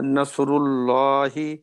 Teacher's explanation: یہ پہلا لام تو باریک پڑھیں گے، دوسرا لام اللہ کا موٹا ہوگا · را کے اوپر دم ہے تو را موٹی پڑی جائے گی